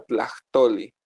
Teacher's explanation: vean como la H atrás de consonante suena aspirada